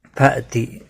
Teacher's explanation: حمزہ ساکن کو جھٹکے کے ساتھ پڑا جائے گا